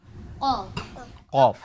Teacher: উপরে তালুর সাথে লাগিয়ে দুই নক্তা ওয়ালা কফ খুবই চমৎকার বিষয় জিহ্বার গোড়া আমাদের যে শেষ অংশ সেখান থেকে তার বরাবর উপরে তালুর সাথে লাগে মোটা করে কফ